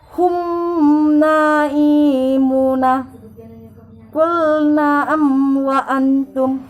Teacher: melafalkan huruf-huruf hijaiyah yang ketemu dengan huruf mim sukun dengan terang dan jelas, dan ini tidak disertai dengan berdegung atau gunnah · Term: izhar syafa'i